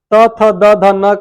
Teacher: त थ द ध न का उच्चारण स्थान किससे होता है दंत से